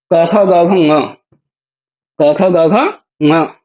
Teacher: इन सब का उच्चारण होता है कंठ से। ये सभी शब्द कंठ से निकलते हैं।